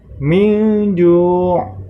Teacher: terdapat huruf ain, maka harus ditekan, min ju', ya, ain sukun atau ain mati